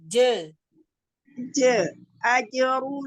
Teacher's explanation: Salah. Jimnya terlalu ke belakang. Maju ke depan lagi.